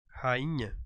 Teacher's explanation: eu tenho duas letras aqui NH que não são pronunciadas eu tenho apenas uma nasalização nesse caso aí